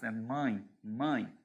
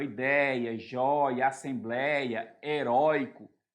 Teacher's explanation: o ditongo aberto é aquele que na pronúncia sai todo o som pela boca nada pelo nariz